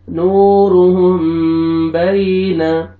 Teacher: واو مد ہے، واو جزم سے پہلے پیش آ رہا ہے